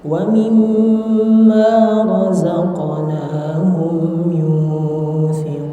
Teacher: Wa mimma harus ditahan dulu dua harakat